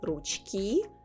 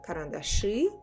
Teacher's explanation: in ручки I say И and I write И but карандаши I say Ы but I write И